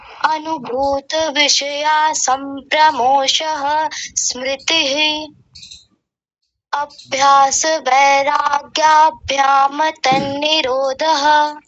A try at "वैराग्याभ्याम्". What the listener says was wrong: दो गलतियां हो गई। वैराग्य, वैराग्य नहीं होता, वैराग्य होता है, वैराग्याभ्याम। और आपने सबसे अंत में क्या बोला? वैराग्याभ्याम। माँ को पूरा बना दिया, माँ को पूरा नहीं करेंगे, इसका उच्चारण करेंगे वैराग्याभ्याम।